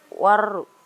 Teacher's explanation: karena ada huruf alif lam bertemu dengan huruf ro, cara membacanya dimasukkan ke huruf ro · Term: Asyamsiyah